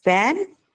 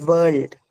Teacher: van is a labiodental V and world is a bilabial ver